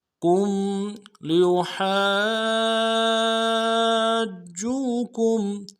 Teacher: کاف کو میم ساکن کے ساتھ ملانا ہے، میم ساکن میں غنہ کریں گے